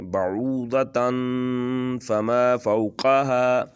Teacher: اس کو ہم نون میں جو آواز آ رہی تھی تن، یا آخر پہ جو نون کی آواز ہے، اس کو ہم غنہ میں بدل کے پڑھیں گے اور لمبا کر کے پڑھیں گے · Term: اخفا